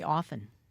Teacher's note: often had a T. But then we dropped the T in the same way that we dropped the T in a word like listen and hasten.